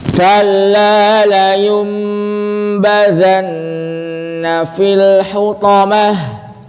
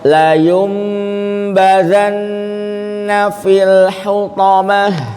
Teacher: Ini ada nun sukun sebelumnya domah, maka dimonyongkan domahnya nun sukunnya ditarik.